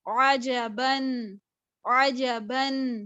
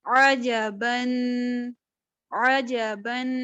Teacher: عین جو ہے اس کو وسط حلق میں سے نکالنا ہے